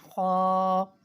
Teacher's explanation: بالکل حلق کے لاسٹ سے ادا ہوتا ہے اور یہ اس کو موٹا بھی پڑھنا ہوتا ہے، یہ موٹے حروف میں سے بھی ہے، خو۔ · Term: حروف حلقی